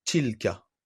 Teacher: L'erreur classique, c'est le fait de trop sortir d'air pour sortir la lettre ta. Effectivement, le ta arabe correspond pas au t du français.